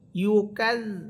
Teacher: জাল হরফের মাখরাজ জিহ্বার আগা সামনের উপরের 2 দাঁতের আগার সাথে লাগবে।